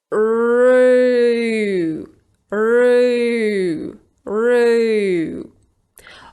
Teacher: It's gonna sound more like 'euw'. The tip of my tongue is high at the beginning, because I start with the /r/ sound actually and then it rolls out closer to the end of this sound. · Now how do you go from /r/ to /u:/. You slowly roll out your tongue, so the sound /u:/ is not going to be the same at the beginning and at the end. It's gonna sound more like 'euw'. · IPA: /ru:/